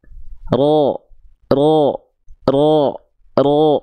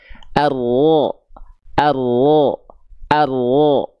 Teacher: jadi si ujung lidahnya dia enggak betul-betul nempel justru ujung lidahnya karena enggak nempel dia bikin celah kecil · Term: huruf ro